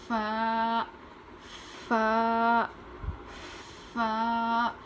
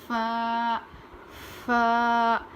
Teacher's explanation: اوپر کے دانت کو نیچے کے ہونٹ پر لگا کر پڑھیں گے